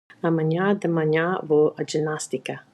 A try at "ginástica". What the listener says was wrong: It sounded more like a J, as in Joe, but there shouldn't be a D sound there. Ginástica.